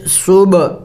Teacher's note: قلقلہ کرنا ہے با حروف قلقلہ میں سے ہے